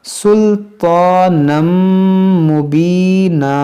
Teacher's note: तनवीन के बाद मीम है तो यहाँ पर इदगाम करेंगे, सुल्तानम मुबीना।